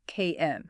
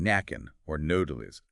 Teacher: with no vowel sound in between, you redirect the airflow through your nose for the N. KN. Saying nacken or nodelis rapidly and cleanly needs really fast, subtle coordination between the back of your tongue and your soft palate, the bit at the roof of your mouth controlling nasal airflow.